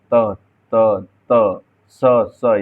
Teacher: उच्चारण करते समय जीवा ऊपरी मसूड़े यानी वत्सर को स्पर्श करती है या झटके से पीछे आ जाती है। यानी जैसे बोलेंगे त त, जैसे जीभ को आप बोल के देखिए त त त स स, यानी झटके से एक साथ आपके मसूड़ों से भी लगेगी। · यानी जैसे बोलेंगे त त, जैसे जीभ को आप बोल के देखिए त त त स स, यानी झटके से एक साथ आपके मसूड़ों से भी लगेगी। आपकी जीभ जो है मसूड़ों से लगेगी और स्पर्श करते हुए झटके से पीछे हट जाती है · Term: वत्सर्य